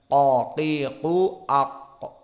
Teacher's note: Dan itulah makhraj qaf, al-hanak al-a'la hampir menempel dengan aqsal lisan.